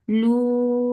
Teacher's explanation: make it 2 counts long and circle your lips